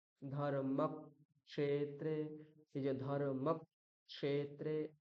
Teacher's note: এই যে মাঝখানে একটা সামান্য রকম একটা স্পেস দিলাম আমার উচ্চারণের সময়, সেইখানে বোঝানো হলো যে এখানে দুটো ককার উচ্চারিত হলো, দ্বিত্ব করা হলো